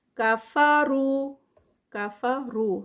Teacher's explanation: رو پہ پھر جو ہے وہ را ہیوی ہوگا اور ساتھ میں واو مد ہے تو 2 کاؤنٹس اس کے